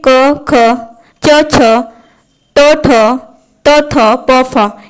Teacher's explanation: यह सब बोलने में कंपन उत्पन्न नहीं होता है इसलिए यह अघोष वर्ण कहलाते हैं